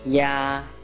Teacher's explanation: The first tone has a high, even pitch.